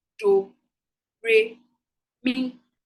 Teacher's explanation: Do is the low tone. Re is the mid tone. Mi is the high tone. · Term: 3 tones